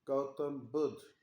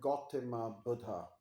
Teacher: They don't call it uh, Gautam Buddha, but they call it Gautama Buddha. So they add an A vowel to it.